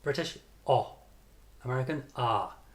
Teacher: This is a very British sound. O, because this vowel is not used by Americans. O. To make it, you need to move your tongue very far back in your mouth, as far back as you can go, and open your mouth wide.